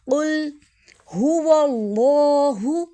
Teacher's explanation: اللہ کا لام موٹا پڑھیں گے کیونکہ اس سے پہلے زبر آ رہی ہے